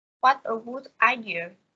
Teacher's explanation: the tones rise at the beginning and gradually fall at the end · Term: Exclamations